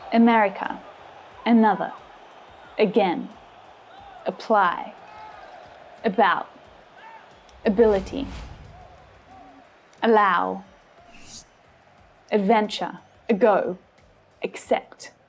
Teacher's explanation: the first syllable is unstressed now these words all start with the schwa sound